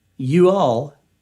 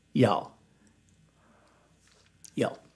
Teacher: But curiously, with all the 1-syllable words that we Southerners turn into 2 syllables, there is one that we take 2 syllables, 2 words, and turn it into 1 word, 1 syllable. You all, we just say y'all.